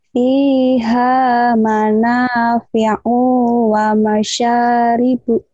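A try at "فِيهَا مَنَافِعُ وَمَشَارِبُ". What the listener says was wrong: Punya pendek, punya pendek. Katanya iya, o-nya pendek. Kok panjang nih ya? Masih.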